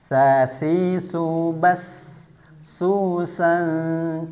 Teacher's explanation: Dari segi nafas dia bersifat hames, gampang berdesis dia ya keluar nafas. Kemudian dari segi suara dia bersifat rakhah.